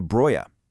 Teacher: The medial velar plosive G is totally gone, mutating it into broya.